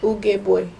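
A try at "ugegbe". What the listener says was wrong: Ugebe. So avoid saying the boy. Avoid saying the u. Say ugebe. So ugebe.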